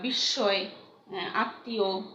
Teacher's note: সংযুক্ত ব্যঞ্জন এই যে ব্যঞ্জনের সঙ্গে ম ফলাটি যুক্ত থাকছে সেই বর্ণটি দুইবার উচ্চারিত হয়। হ্যাঁ, এই বিস্ময় দুইবার উচ্চারণ হলো, আত্মীয়তা দুইবার উচ্চারণ হলো। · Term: দ্বিত্ব উচ্চারণ